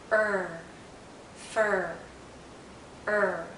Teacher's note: this is a very close sound is a high vow so our mouth is very closed and our tongue is generally in a high position